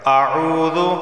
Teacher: قل اعوذ واو سے پہلے پیش ہے، عین واو پیش عو، اسے ایک الف کے برابر کھینچ کر پڑھا جائے گا